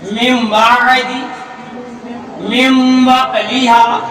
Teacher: एक अलिफ यानी 1 सेकंड तक हम उस हुरूफ को नाक में छुपाएंगे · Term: इकलाब